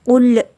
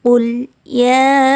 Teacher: lidah kita ditahan sehingga tidak menimbulkan bunyi pantulan